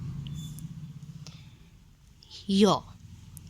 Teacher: जिह्वा का स्पर्श तालु से होता है। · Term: अंतःस्थ